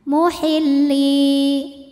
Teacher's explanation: Ya Sukun didahului kasrah maka panjang dua harakat muhilli namun pada kalimat ini dibaca Dua harakatnya hanya saat berhenti